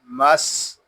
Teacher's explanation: यहाँ सीन जो है ये हरूफे सफीरिया में से है। जब हम सीन को अदा करेंगे तो सीटी की तरह तेज आवाज निकलेगी।